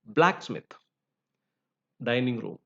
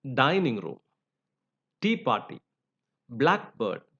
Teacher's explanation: so the first element is given stress